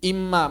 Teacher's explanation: asalnya in bertemu ma. Menjadi imma, maka nunnya hilang. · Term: idgham